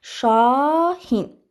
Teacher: şahin sözündə uzanan saitim a-dır